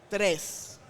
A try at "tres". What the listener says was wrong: Roll the R a little bit. Tres.